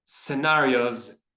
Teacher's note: So just drop the tone at the end of the word.